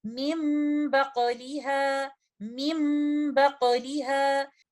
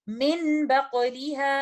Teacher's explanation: Next example में हम देखते हैं कि नून साकिना इक़लाब की कंडीशन में है क्योंकि बाद में आने वाला लेटर है लेटर बा। यहाँ पर कंप्लीट गुन्ना का टाइम देते हुए, नून साकिना को मुकम्मल तौर पर मीम में बदलते हुए हम इन अल्फाज की अदायगी कुछ इस तरह से करेंगे, मिम बक़लिहा, मिम बक़लिहा।